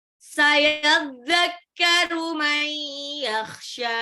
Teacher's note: Jadi kayak nun sukunnya lebur tapi ditahan. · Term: idgham